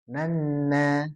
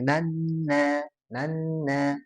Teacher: Jadi masuk hidung dan ditahan gitu ya. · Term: idgamnya